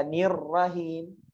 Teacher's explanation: nir dulu kan berarti ro-nya sukun dulu kan, baru ro berharokat. Karena dia tasydid.